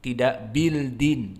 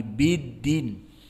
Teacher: Maka diidghamkan karena dia lam syamsiyah yudgham ila dal. Biddin, maka dalnya musyaddadah di sini.